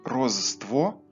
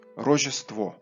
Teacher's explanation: Ж і С опинилися поруч і завдяки явищу так званої асиміляції уподібнилися до З